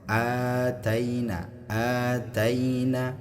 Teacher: hamzah ya yang berharakat fathah dan diikuti alif alif sukun maka di sini dia dipanjangkan dua harakat